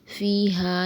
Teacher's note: یہاں یائے مدہ ہے، اسے ایک الف کے برابر پڑھیں گے، اور ہا یہاں بھی ایک الف کے برابر کھینچ کے پڑھیں گے۔